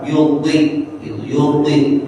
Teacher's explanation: Maka bunyinya walaupun kasroh tetap dimonyongin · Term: isti'lah